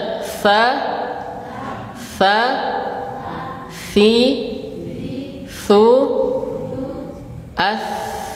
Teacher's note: Lidah, ujung lidah menempel di ujung gigi seri atas. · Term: huruf sa